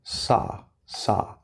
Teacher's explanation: So do not round your lips. You see a W, but there's no W. Do not round your lips. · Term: ah